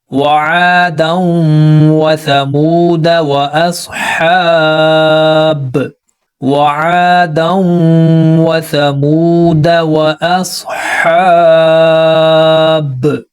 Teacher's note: تو لیکن یہاں پر یہ الف اس کے اوپر سرکل ہے تو یہاں پر یہ الف نہیں پڑھا جائے گا، پوری طرح خاموش رہے گا، جسٹ ہم دال کے اوپر زبر پڑھیں گے اور پھر آگے ملا کر پڑھیں گے، یعنی کہ یہاں پر دال کے اوپر زبر کو پڑھا جائے گا، لمبا نہیں کیا جائے گا